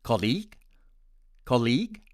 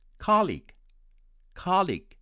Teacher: my friends from india tend to pronounce it as colleague colleague with stress on the second syllable and my american friends would pronounce it as colleague colleague with stress on the first syllable